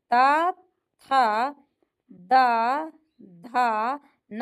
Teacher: त थ द धा न जो है यह दंत का उच्चारण है।